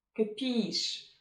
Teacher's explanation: It has two syllables and the second one is stressed. In the first syllable, we can hear the short sound or even schwa.